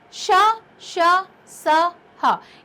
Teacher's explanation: इन व्यंजनों के उच्चारण के समय वायु जो होती है वो मुख से रगड़ खाकर ऊष्मा पैदा करती है, यानी उच्चारण के समय मुंह से गर्म हवा निकलती है।